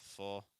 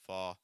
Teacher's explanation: full where your mouth's more closed versus fall mouth a little bit wider